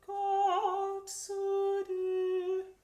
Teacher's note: So the Z's have a little T in front of them